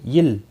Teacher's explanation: اللہ کا لام باریک پڑا جائے گا زیر کی وجہ سے، اس کے اوپر کھڑی زبر بھی ہے، ایک الف کے برابر کھینچ کر پڑھیں گے۔